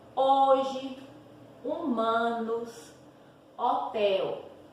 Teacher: A letra H no início de palavra não representa som. Então, quando eu faço a leitura dessas palavras, vocês percebem que eu estou lendo a partir da vogal, ó. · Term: H inicial